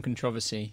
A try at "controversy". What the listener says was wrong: You're putting the emphasis on the wrong syllable.